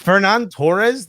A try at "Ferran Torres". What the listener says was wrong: Ferran, not Fernan. Ferran. Roll them R's, bro. We roll our R's here.